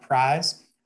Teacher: the monophthongization of I, like in prize, coming out more like prize